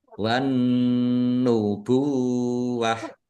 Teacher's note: ta marbutah karena waqaf dibacanya ha sukun ya w nubuwah wakafnya pendek karena tidak ada tanda panjangnya.